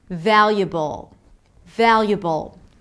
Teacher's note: Just like with "inevitable", we have the B sound, schwa and dark L